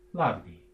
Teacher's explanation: By late Old English, again with sound simplification, the H is gone, and we have an F, which would have been pronounced probably as a V because it's between two voice sounds, the A and the D. And we probably have lavdi.